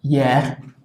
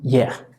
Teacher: hay una H, no suena. No es como en inglés, no es como en alemán, no se pronuncia como J. En general, en francés, la tendencia es que no se pronuncia.